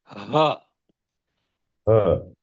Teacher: پورا گلا کھول کے ہوا نیچے جہاں تک لے جا سکتے ہیں وہاں سے کریں گے تو ہاں نکلے گا